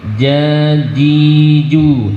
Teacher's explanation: jim letaknya ada di wastul lisan, ada di tengah-tengah lidah kita, bukan di ujung tapi di tengah. Kita bunyikan jajiju, silahkan.